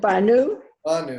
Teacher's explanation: the accent is on the first syllable in that word